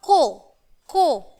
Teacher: ठीक है, अब यहाँ है हमारा ओ, यानी डबल मात्रा है हमारी, तो थोड़ा सा खींच के बोलेंगे बच्चों। ये है ओ की मात्रा, को।